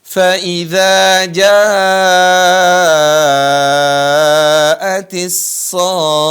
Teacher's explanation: Mad lazim kilmi. Perhatikan. Di sini dibaca sampai 6 harokat ya.